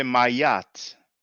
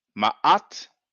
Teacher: If you can, then you would say Ma'at, because we have the Aleph and the Ain, and the Ain is a glottal, has like kind of a glottal stop. It's a glottal A.